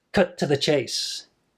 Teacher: you got strong weak weak strong